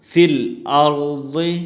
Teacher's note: فی الارض میں را موٹی پڑھی جائے گی